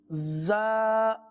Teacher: دونوں دانتوں سے ادا ہونے والا سیٹی کی آواز